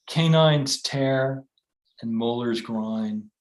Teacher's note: gives it some of the stateliness associated with that meter but because it's headless there's more stress per syllable than there is in uh in traditional iambic pentameter so it gives it a little bit more intensity and then